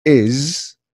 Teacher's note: is, it's not S, is with a Z sound